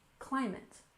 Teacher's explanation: We stress the first syllable, you remember, in climate